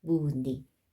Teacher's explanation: 네, 의는 으로 발음하는 게 맞습니다. 다만 자음을 첫 소리로 가지고 있는 의는요, 이로 발음한대요